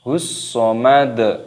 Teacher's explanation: Ada alif lam samsiyah, yaitu tandanya ada huruf shad yang berharokat tasdid, maka ini dimasukkan ataupun diidghamkan. Allahus, nah, seperti itu, dimasukkan hus somad.